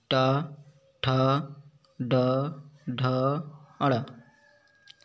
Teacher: जो कठोर ऊपर का तालु है उसके बीच का भाग को मूर्धा कहते हैं। जब जीभ की उल्टी हुई नोक का निचला भाग मूर्धा से स्पर्श करता है। ऐसी स्थिति में उत्पन्न ध्वनियों को मूर्धन्य व्यंजन कहते हैं।